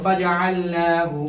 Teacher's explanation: اب دیکھو فجعلناہ، کھڑا زبر کیا ہے؟ کھڑا زبر برابر ہوتا ہے کس کے؟ الف مدہ کے، اس لیے اس کو ایک الف برابر کھینچ کر کے پڑھیں گے